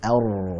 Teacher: Jadi dilunakkan cara pengucapannya, jangan terlalu ditekan. Kalau terlalu ditekan ar, nah, nanti malah jadi getarannya kasar